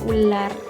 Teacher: posisi lidah pada saat mengatakan fonem U, lidahnya itu ada di posisinya itu ada di belakang, yaitu contohnya pada kata ular gitu.